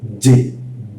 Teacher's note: Kalau huruf J-nya di Indonesia itu di depan bahkan ada hembusannya J. J karena ee posisinya keluarnya dari gigi dia jaju.